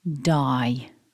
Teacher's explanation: it begins with the voiced duh and then we've got the double vowel I putting that together repeat after me die and syllable two is · Focusing on syllable 1, it begins with the voiced d, and then we've got the double vowel I